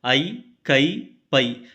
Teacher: ஐகார எழுத்து தனித்து வரும் இடங்களில் தனக்குரிய இரண்டு மாத்திரை அளவில் முழுமையாக ஒலிக்கிறது